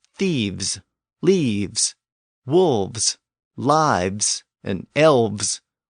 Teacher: in the case of thieves, we convert that final F to a V sound before we put on the S